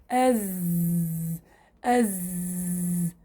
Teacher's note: في جهر نتيجة خروج حرف الزاي يصيب عنا تضام للوترين الصوتيين واهتزازهما و انحباس كثير لهواء النفس، يصير عندنا انحباس كثير. · مخرج حرف الزاي من طرف اللسان مع ما فوق الثنايا السفلى، أي الثنايا بس، مع إبقاء فرجة يسيرة بين اللسان والأسنان. العلاقة بين اللسان والأسنان فقط، الباقي ما له علاقة. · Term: صفة الجهر